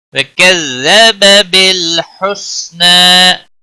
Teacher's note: نون کے اوپر کھڑی زبر ہے، ایک الف کے برابر کھینچ کر پڑھیں گے وقف کی صورت میں بھی